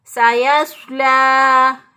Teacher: लाम खड़ी ज़बर ला, एक अलिफ के बराबर, इसको लंबा करेंगे